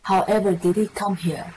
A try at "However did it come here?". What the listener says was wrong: That's better. Good. Perfect.